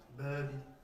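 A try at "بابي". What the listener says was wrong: Allonge un tout petit peu plus. Babi. Les voyelles longues, d'accord?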